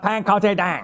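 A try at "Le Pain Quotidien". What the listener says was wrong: It's pan. I know it's pan. It's not there. You don't pronounce the N.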